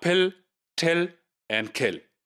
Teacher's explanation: English pill till and kill right so the poor to incur in these three words the initial sounds these are aspirated